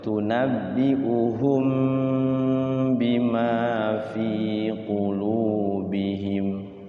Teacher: Ya, mimati ketemu ba, namanya ikhfa syafawi, jadi ditahan mingkem